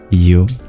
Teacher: U is a labial vowel.